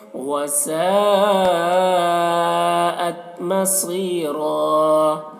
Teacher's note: دیکھیے وسا میں جو مد یہ مد متصل ہے۔ مصیرہ صاد کو پر پڑھنا حروف مستعلیہ میں سے ہے